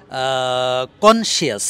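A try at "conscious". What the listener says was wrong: না কনশিয়াস না শিয়াসটা বাদ দিয়ে শস কনশিয়াস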